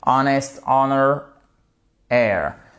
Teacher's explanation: Honor, air, vous ne prononcez pas le H